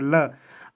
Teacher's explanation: जैसे ल आप बोल सकते हैं तो ल और जो जीभ है वो आपस में बंद हो जाते हैं और साइडों से बगल से हवा निकलती है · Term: पार्श्वी